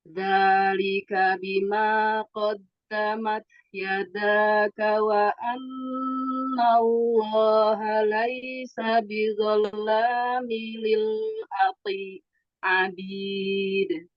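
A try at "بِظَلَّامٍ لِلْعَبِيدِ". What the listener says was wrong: Tasdidnya di atas lam. Ini. Dipanjangin sedikit Lil abid. Dua kali. Ini minnya tanwin ketemu lam. Jadi ada idgham bila gunnah dia.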